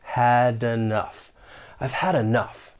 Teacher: That final consonant sound in had may get linked with the beginning vowel sound in enough. Had enough. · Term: linking